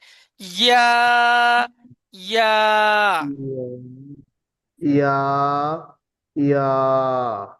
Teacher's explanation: হামজা হ্যাঁ, ইয়া ইয়া ইয়া একালিপ করে টান আছে, জিভের মাঝখান উপরে তালুর সাথে লেগে ইয়াটা উচ্চারণ হয়